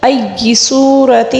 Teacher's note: کھینچ کر پڑھیں گے، ای صورت، سو کو واو مدہ ہے، یہاں پر واو ساکن سے پہلے والے حرف پر پیش ہے، یعنی کہ صاد پر پیش ہے، اس کو ہم واو مدہ کہتے ہیں، اس کو 1 الف کے برابر کھینچ کر پڑھتے ہیں